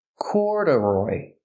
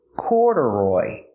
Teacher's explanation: so the second syllable is not stressed it's pronounced relaxed